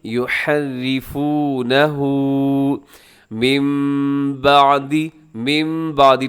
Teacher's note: نون ساکن کے بعد با ہے جو کہ یہاں پر اقلاب ہو رہا ہے، ہم نون کو میم کے ساتھ چینج کر دیتے ہیں، تو یہ سے کہا جاتا ہے اقلاب۔